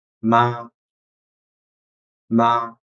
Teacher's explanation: It is a neutral tone. It pronounces short and soft. Ma, ma. It is often used in the end of the interrogative sentences.